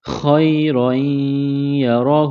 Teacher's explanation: خا جس طرح انسان گلے سے بلغم نکالتا ہے، اس طرح خا کو نکالیں گے، خا کو موٹا پڑھیں گے